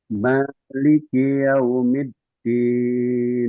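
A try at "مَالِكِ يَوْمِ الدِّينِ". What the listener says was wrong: Oke, k-nya kurang pecah dikit.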